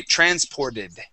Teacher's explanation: Okay, and if we add an ED ending to the end of that word, we can change the pronunciation of that T to a D